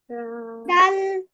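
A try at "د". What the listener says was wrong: ডাল, টেনে বলতে হবে তো।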